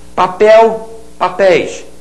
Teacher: Papel, oxítona terminada em el, você faz com ditongo aberto.